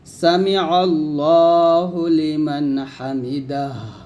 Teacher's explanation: থামলে হার সাকিন হয়ে যাবে